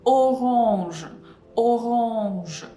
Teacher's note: it's open O, but it may be a little bit hard to pronounce it too open in this position, so we can slightly close it